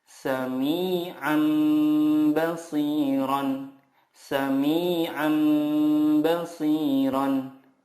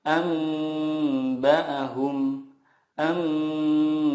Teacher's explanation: mengganti nun sukun dengan mim sukun dan disertai gunnah 2-3 harokat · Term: iqlab